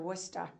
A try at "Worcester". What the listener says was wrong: Worcester is ER, not A. Worcester, not Worcester.